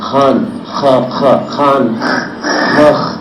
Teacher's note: all these sounds are made from the back of the throat